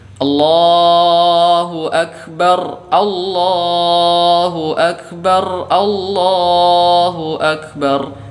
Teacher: menyukun huruf ra atau mematikan huruf ra padahal kita tidak berhenti atau tidak wakaf di sini.